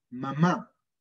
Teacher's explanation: bilabial, en donde los labios se tocan.